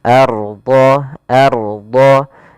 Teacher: apabila ada huruf ra sukun didahului dengan harakat fathah, maka dia tebal ra-nya. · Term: ra tafkhim